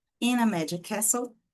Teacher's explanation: E aí a gente vem com mais essa outra dica aqui, que no caso da palavra castle, castelo, a gente não fala esse som de T